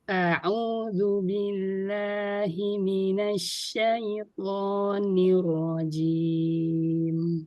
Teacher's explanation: A-nya jangan dipanjangin, jangan dipanjangin. Cukup dibuka.